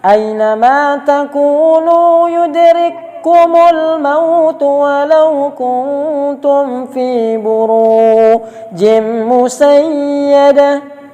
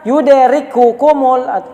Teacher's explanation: tidak dibaca kaf yang satu, dimasukkan kepada kaf berikut. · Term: idgham mutamasilain